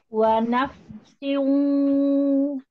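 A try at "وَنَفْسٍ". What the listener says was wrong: Siu apa agak dientak gitu loh. Harusnya enggak siu, dia perpindahan dari jauh ke hidungnya itu perlahan. Jadi tahu-tahu pindah aja gitu. Tahu-tahu terbagi aja, bukan sengaja siu, enggak siu. Siu. Hidungnya ini gini, fungsinya pakai 70 di hidung. Harusnya kan 50-50. Siu masih ada di hidung, mulut. Siu. Siu. Ya, ketika idgham bi gunnah, perhatikan. Idgham bi gunnah tidak dinaber.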